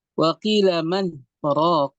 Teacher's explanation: Dia terpisah oleh saktah dan saktah menghalangi idgham.